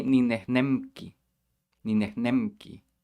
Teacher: the M is made with your lips all the way in the front. But the K is all the way in the back.